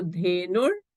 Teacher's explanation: The visarga is preceded by u, so the visarga becomes a refa. So dhenur, and this is vatsaha anusarati.